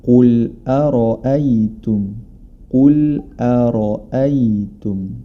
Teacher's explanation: Huruf ro dibaca tebal karena dia berharakat fathah. Hati-hati jangan sampai hamzah di sebelum huruf ro atau setelahnya ikut menjadi tebal.